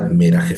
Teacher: F porque no tiene el punto dagene y por lo tanto se pronuncia de manera fricativa como una F